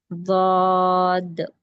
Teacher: زبان کا جو کروٹ ہوگا یعنی کہ جو سائڈ کا حصہ ہوگا اس کو اسی کے اپوزٹ والے داڑوں کو ٹچ کریں گے اور تھوڑا سا موٹا کھینچ کے پڑھیں گے